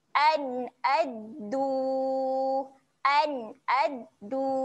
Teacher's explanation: Jelaskan saja bunyi nun mati tu. Jangan kita dengung pula kat sini eh. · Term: bacaan yang jelas